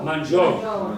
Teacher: non hanno identico valore perché la O è prevalente, la U si avverte appena. Mangiò, la U quasi quasi non si sente. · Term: dittongo